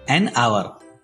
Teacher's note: As H is silent here, hour starts with a vowel sound.